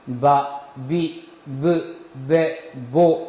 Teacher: 여러분들이 성대에다가 손을 대면은 이 성대가 떨리는 것을 느낄 수 있습니다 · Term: 유성음